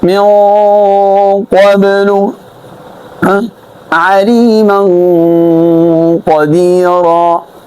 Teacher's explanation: غنه مفخمه کې يعني دکه به د خیشوم نه ادا کیږي